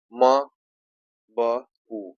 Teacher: म, ब, उ सभी क्या है, ओष्ठ वाले हैं